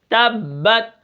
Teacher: ہم تشدید کو جماؤ اور سختی کے ساتھ پڑھیں گے، اور آخر میں جو تا ہے وہ کیا ہے، قلقلہ نہیں ہے